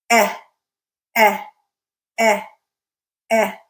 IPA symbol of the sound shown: Ɛ